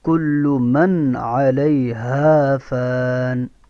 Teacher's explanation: نون ساکن یا نون تنوین کے بعد اگر حروف ہلکی میں سے کوئی حرف آ جائے تو وہاں اظہار ہوتا ہے، اس لیے یہاں پہ اس نون میں اظہار کریں گے، یعنی نون کو عین سے ظاہر کر کے پڑھیں گے